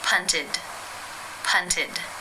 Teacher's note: it is case three where the e d is pronounced as the e as in sit with the D sound